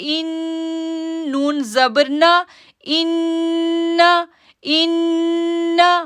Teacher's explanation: ہم نے غنہ کیا پھر ہم نے نون کے اوپر زبر تھی وہ ادا کی